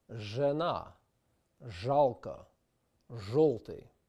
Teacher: We have the voiced post-alveolar consonant, zh, as in the English word treasure and pleasure, or in the Russian words zhena, zhalka, zholty.